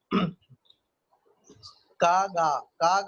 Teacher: चा, जा बोलेंगे तो आपको लगेगा जबान तालू से यानी पैलेटल से टकरा रही है, तो ये पैलेटल साउंड है। का गा बोलेंगे तो आपको लगेगा कि जबान पीछे से उठती है